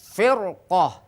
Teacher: setiap ro sukun diikuti huruf isti'la maka ro sukun menjadi tafkhim atau tebal